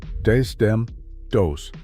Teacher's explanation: These, them, those with the th sound knocked clean out.